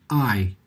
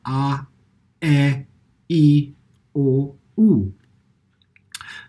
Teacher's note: we have a glottal attack, and this is when the folds compress before the air is released, such as when we say I, or all the vowels, A, E, O, U.